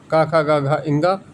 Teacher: आ और क वर्ग के अक्षर क ख ग घ और विसर्ग इसको बोलते हैं कंठ से